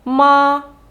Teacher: показує нам що вимовляємо ми його на одній інтонації ми нічого не змінюємо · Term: рівним